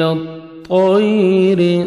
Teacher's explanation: طا کو موٹا کر کے پڑھیں گے · طیر یائلین ہے، نرمی سے ادا کریں گے۔ را کے نیچے زیر ہے، را کو باریک پڑھیں گے۔